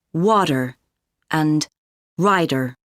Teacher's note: in North American English tea often sounds like duh in the middle of words